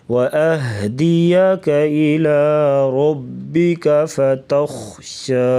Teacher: خا گلے سے آواز نکالیں گے اور خا کو موٹا پڑھیں گے